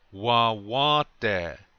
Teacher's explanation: Remember to put the accent on the second syllable, the second wa, okay? One more time.